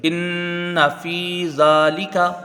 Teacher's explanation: ذال میں کھڑا زبر ہے، ایک الف کے برابر کھینچ کے پڑھیں گے۔